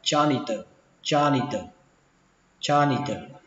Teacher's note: Lao công đọc là cha ni tờ, âm chờ này là âm chờ rung các bạn nhé, âm chờ rung trong cổ họng, đọc là janitor janitor janitor.